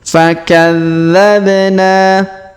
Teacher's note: dza kita tahan dan kita tekan karena terdapat tanda tasdid fakadzabna huruf ba kita pantulkan atau kita qalqalahkan ya karena berharakat sukun fakadzabna kemudian huruf na kita panjangkan dua harakat karena terdapat Alif